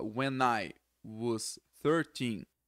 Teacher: When, com I, que é a palavra eu, ele junta tudo.